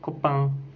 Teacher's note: C'est une voyelle antérieure mi-ouverte, étirée et nasale. On dit que c'est une voyelle nasale parce que l'air sort de la cavité nasale.